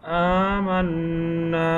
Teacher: জবরের পরে হরকতের পরে নুনের পরে তাসদীদ, এজন্য গুণনা করে পড়িতে হবে